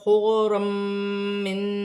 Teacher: غاد ساکن ہے، غاد کو خا کے ساتھ کی حرکت کے ساتھ ملا کر پڑھا جائے گا، 2 زبر کی تنوین کے بعد میم مشدد آ رہی ہے، حرف یرملون میں سے ہے، ادغام مال غنہ کا قاعدہ ہے، تنوین میں غنہ بھی کیا جائے گا اور ملا کر بھی پڑھا جائے گا